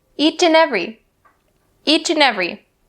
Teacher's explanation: a lot of people will change the word and to an and we drop that d sound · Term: connecting sounds